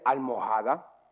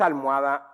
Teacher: O decís almohada sin la H arábiga